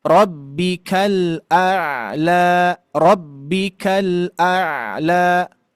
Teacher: Dari ujung lidah sampai pinggirnya menempel ke gusi gigi seri atas. Tuh, ya terlihat gusi gigi seri atas. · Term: huruf lam